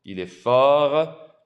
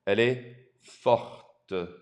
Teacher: By adding an E on the end, you bring out the T